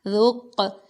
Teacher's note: اب قاف ساکن ہے تو اس کے اوپر قلقلہ کیا گیا،